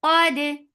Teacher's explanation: keep dal light and qaf heavy